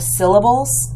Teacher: We have the stressed first syllable, sil, and then the unstressed second two syllables